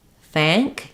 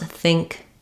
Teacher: Just when you're trying to just do these two sounds, think, thank, you should just feel your jaws a little bit more open and the front of your tongue is further down for the ah than it is for the I